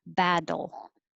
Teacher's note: those two t's sound like a d